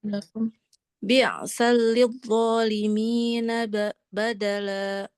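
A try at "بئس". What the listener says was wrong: Bisa, hamzah, jangan biasa. Bisa.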